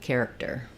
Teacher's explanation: It's just an unreleased K sound. So I do stop the air for the K, I lift my tongue in the back for that K, but then I just release it on the T, character.